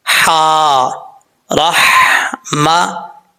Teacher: ये इसका मखरज है हल्का दरमियान, वहाँ से ये अदा होती है, तो इसको भारी साउंड के साथ नहीं, बरीक हा बरीक जो है वो पढ़ा जाएगा।